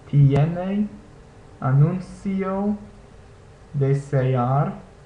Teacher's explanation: notice that you hear both vowels in these words